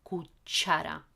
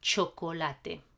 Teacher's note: in Spanish, CH does this sound ch, not sh, just ch.